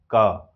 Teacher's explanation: कंठ से उस एयर को रोक दिए हैं। जैसे हम इसीलिए क जो है कंठ की ध्वनि कहते हैं।